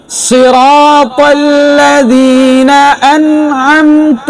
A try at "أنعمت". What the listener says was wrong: আনে হয়ে গেছে এটা কলকলা হবে না أنعمت